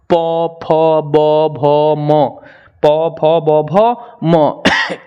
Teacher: इसमें दोनों लिप हमारा जो होता है लोल, जिसे हम होठ कहते हैं, ओष्ठ, वो सट जाता है, तो इसका उच्चारण स्थान आपका ओष्ठ हो जाएगा।